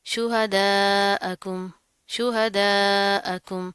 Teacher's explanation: अलिफ के ऊपर मद आ रही है, इसको लंबा करके खींच के पढ़ेंगे